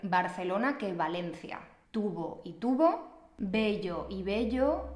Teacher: en español la b y la v se pronuncian Exactamente igual